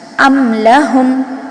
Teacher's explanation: میم کی آواز ظاہر ہو رہی ہے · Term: اظہار شفوی